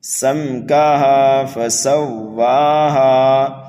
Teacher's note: سین کو سیٹی کی آواز دے کر کے پڑھنا ہے، واو اور ہا کو کھینچ کر کے پڑھنا ہے ایک الف کے برابر۔